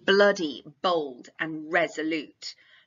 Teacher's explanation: a lovely bit of plosive alliteration that really kind of enhances the violence of these words